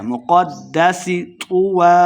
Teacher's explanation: اپنے ہونٹ گول کریں گے، مقدس قاف کو موٹا پڑھیں گے، قاف کو دال کے ساتھ ملا کے پڑھنا ہے کیونکہ دال مشدد ہے